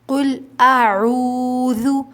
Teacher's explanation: جب حمزہ ادا ہوگا تو یہ سینے کی طرف سے ادا ہوگا اور عین حلق کے درمیانی حصے سے